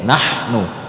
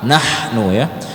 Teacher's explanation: Nah, letak huruf ha itu di wasthul halqi, di sini tengah-tengah. Kalau di kita yang laki-laki ini di jakun ini, nahnu. Jakunnya agak naik ketika menyebutkan huruf ha ini. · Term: ha kecil